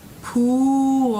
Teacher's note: The oo as in boo vowel has the tongue tip forward. Pool. So the tongue has to pull back a little bit.